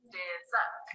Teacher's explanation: Dessert is a 2-syllable word with a stress on the second syllable.